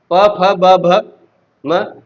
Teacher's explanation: प वर्ग का उच्चारण स्थान ओष्ठ होता है